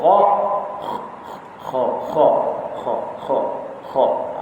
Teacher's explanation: Bunyi di hujung halqum, tapi angin tetap keluar melalui rongga mulut ini. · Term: hamas